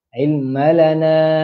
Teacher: Na, na panjang, empat harakat.